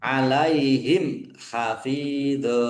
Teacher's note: Mim sukun bertemu dengan huruf ha. Bacaan izhar syafawi dibaca jelas. Fa kasrah ya sukun mad thobi'i panjang dua harakat.